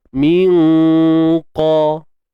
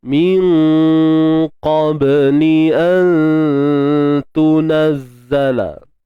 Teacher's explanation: ikhfa hakiki kat sini dibaca dengan tafkhim, dengan tebal